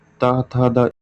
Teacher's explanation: ता था दा इनको दांतों से बोलते हैं